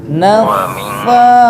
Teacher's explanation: sa ujung gigi ujung lidah kena ke ujung gigi depan